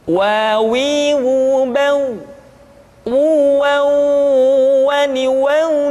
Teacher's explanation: diucapkan dengan cara memancungkan dua bibir kita